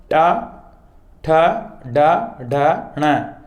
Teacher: तो जीभ लुढ़कती हुई यानी पीछे के भाग को मुंह के अंदर वाले भाग को स्पर्श करती है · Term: मूर्धन्य वर्ण